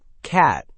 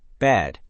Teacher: For cat, your jaw drops lower and your mouth opens wider than you might expect. This vowel requires real jaw movement. For bed, your mouth opens much less, and the sound is shorter and more central.